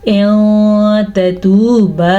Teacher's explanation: یہ ہے تا زبر تا اور یہ ہے تا پیش واو تو، ایک چھوٹا اور ایک لمبا۔ لمبا واو مدہ کی وجہ سے ہے کیونکہ آگے واو آ گیا ہے، تو اس کو ہم پڑھیں گے تتوبا الی اللہ۔